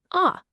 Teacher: You got to open your mouth wide for a long kind of dark a sound. · Now, the key to really nailing this sound is all in the technique. You gotta open your mouth wide for a long, kind of dark ah sound, just like the A in the word father. · Now, its name and its sounds are basically the same. It's a pure, open ah sound. Seriously, just think about what you say when a doctor tells you to open wide. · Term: German A